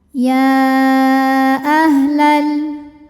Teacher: Mad thobbiinya adalah fathah panjang pada kata ya yang artinya hai. · Jadi walaupun penulisan man thaobi'i dengan hamzahnya disatukan sebetulnya di sini ada dua kata terpisah. Yanya dibaca panjang berapa? Sama saja seperti mad jaiz munfasil hakiki ya empat atau lima harakat. Ya. Jadi ini mad jaiz munfasil hukmi.